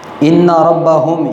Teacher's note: اس میم ساکن کے بعد کیا آ گیا ہے، با آ گیا ہے. ٹھیک ہے، اب یہاں پر آواز ناک میں لے کر جائیں گے، غنہ کریں گے